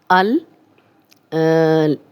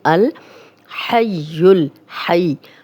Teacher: لام پہ جزم ہے تو حمزہ کی زبر لام سے ملے گی، الحی الحی۔